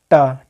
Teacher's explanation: टा जो है या दंत व्यंजन नहीं है बल्कि यह एक मूर्धा व्यंजन है,